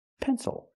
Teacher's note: Because the stress is not on the syllable before the L. That's why it's not pronounced ill, it's pronounced o.